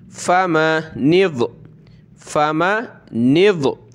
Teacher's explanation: یہ نون کو ہم نے ملانا ہے ضاد کے ساتھ